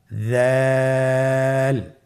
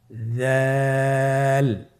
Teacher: দাল হরফটিও বারিক হরফ। উচ্চারণ করার সময় অবশ্যই 3 আলিফ টেনে পড়তে হবে। দালের মাখরাজ হলো জিহ্বার আগা সামনের উপরের 2 দাঁতের আগার সঙ্গে লাগিয়ে উচ্চারিত হয়।